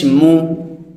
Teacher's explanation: পেশ দিয়ে যখন আমরা কোনো হরফ উচ্চারণ করব তখন আমাদের ঠোঁটটা কেমন থাকবে, তখন আমাদের ঠোঁটটাকে গোল করে রাখতে হবে। যখন আমরা ঠোঁটের কন্ডিশন গোল রেখে উচ্চারণ করব তখন আমাদের উচ্চারণটা একেবারে শুদ্ধ হবে।